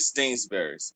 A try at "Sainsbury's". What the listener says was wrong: It's no T. It's not.